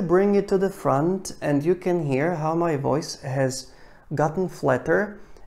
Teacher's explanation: you can hear how my voice has gotten flatter and my soft palate dropped and my lips got more active and my mouth is less open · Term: point of resonance